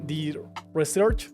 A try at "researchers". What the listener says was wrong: So very good, except for the ending of researchers, the ERS researchers, but that's it. The researchers.